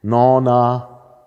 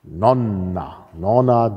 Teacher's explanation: also Länge ist distinktiv konsonantenlänge